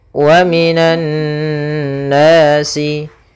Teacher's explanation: Pada bacaan wa minan nasi, ya, di sini ada alif lam syamsiyah, yaitu huruf alif dan lam yang ditulis tapi tidak dibaca sehingga langsung kepada huruf nun tasydid